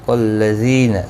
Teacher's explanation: زی یا مدہ ہے، ایک الف کی مقدار کے برابر کھینچ کر پڑھیں گے